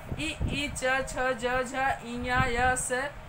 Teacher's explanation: ये तालु से स्पर्श करते हुए इनको वायु निकलती है तो ये तालव्य वर्ण हो गए।